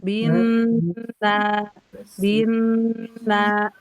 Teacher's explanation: Setelah selesai mendengung 2 harokat, setelah dengungnya sempurna 2 harokat, baru dipanjangkan di al-jauf. Binna, binna, langsung ke al-jauf turun.